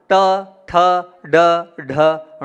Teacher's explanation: जीभ को जब आप पीछे ले जाएंगे वहां से ण का उच्चारण होगा